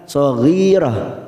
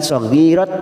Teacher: Ghi kasrah bertemu ya sukun 2 harokat. Ghirah karena kita wakaf di sini tak marbutoh di sini kita baca dengan huruf ha